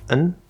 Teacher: The full pronunciation and the way we think of it is ah, the fifth vowel sound, and a regular front n, on. However, in fast speech, you will sometimes hear this be pronounced more like a schwa like uhn or a syllabic n. But, it usually only reduces if the context is clear.